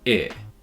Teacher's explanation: The second sound is in the front of the mouth with the tongue raised, for I.